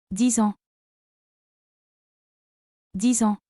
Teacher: The X is pronounced Z because it links with the vowel in ans called liaison. A nasal vowel, you don't pronounce that N fully, instead air comes out through the nose.